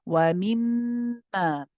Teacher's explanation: the mim mushaddad, it has akmal gunna, we prolong the joining.